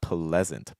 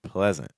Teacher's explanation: instead of saying like a P and then an L, it's like pla. We're going to kind of link it together. It's going to sound a little bit more like pull.